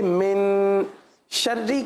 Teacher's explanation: من یہاں پر غنہ کیا جائے گا, اور غنہ ہوگا اکفا والا